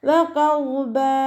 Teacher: ഫതഹ തെൻവീനിൽ വഖഫ് ചെയ്യുമ്പോൾ 2 കൗണ്ട് നീട്ടി വഖഫ് ചെയ്യുക. മദ്ദ് വ.